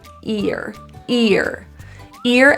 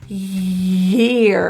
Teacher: the middle of our tongue is going way up to the high part of the palette and it's creating kind of like a friction sound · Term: Y sound